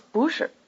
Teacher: notice the rising tone on boo